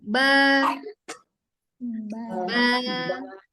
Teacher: Ba itu makhrajnya ada di bibir.